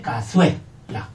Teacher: Y cazuela. Uno creciente. De débil a fuerte.